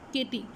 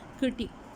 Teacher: तो बहुत वीक सा ट बोलते हैं और रेट्रोवर्ड मतलब पीछे की तरफ टंग आपकी जाती है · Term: फ्लैपिंग